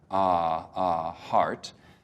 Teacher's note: the vowel that comes before the r sound which is a back vowel for me tongue is low in the back